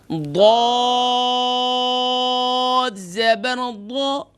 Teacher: ضاد کو اور بھی موٹا کریں گے. ضاد حروف مستعلیہ میں سے ہے